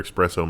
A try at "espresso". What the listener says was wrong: You putting the X in it.